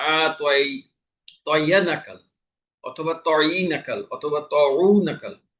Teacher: সাকিনের স্থলে আমি জের জবর পেশ দিয়ে পড়লাম। এই এই সাকিনের স্থলে হরকত পড়ায় অর্থের পরিবর্তনে তিলাওয়াত অশুদ্ধ হয়ে নামাজ বাতিল হয়ে যাবে।